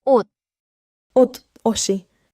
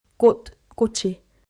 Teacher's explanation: Stop the ending when it's alone. Slide it when a vowel follows.